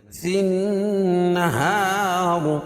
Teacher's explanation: فن نون مشدد اس میں غنہ ہوگا، اور ہا الف سے پہلے ہا کے اوپر زبر ہے تو الف مدہ ہوگا، اور وصل کی صورت میں را باریک پڑھی جائے گی، کیوں؟